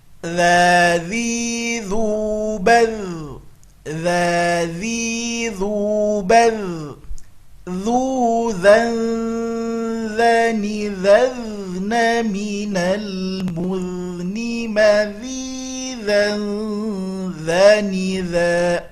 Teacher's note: Huruf dza harus keluar ujung lidahnya, kalau tidak dia akan berubah menjadi za.